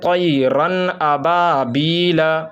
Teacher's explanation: تو اب اس نون کو جو ہے، اس نون ساکن کو ہم صاف صاف پڑھیں گے، اس میں غنہ ہم کو نہیں کرنا ہے، ناک میں آواز نہیں لے جانا ہے، بلکہ صاف طور پہ ادا کرنا ہے۔ جیسے طیرن ابابیل، اگر ہم اس کو پڑھیں گے طیرن ابابیل تو یہ غلط ہو جائے گا، بلکہ ہم کو پڑھنا ہے طیرن ابابیل۔